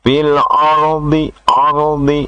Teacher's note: ro mati sesudah harakat jabar namanya ee ro tafhim artinya tebal